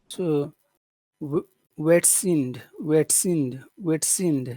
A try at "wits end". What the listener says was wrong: Oh, you do have to pronounce the E clearly. End. You do have to say that. Pretend like there's an H there. Witsend. Witsend. Witsend. Witsend.